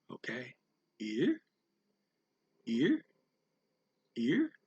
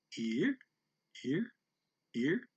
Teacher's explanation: Tone 2 is less dramatic because it starts in the middle and just goes to the top.